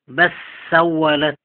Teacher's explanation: أدغم اللام في السين